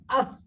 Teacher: জিহ্বার আগা দাতের আগার সাথে উপরের দাতের আগের সাথে মিশবে